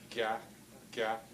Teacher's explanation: If you look at yourself in the mirror straight on and keep your mouth open, ga, you can see how the tongue body is raised in the front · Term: front G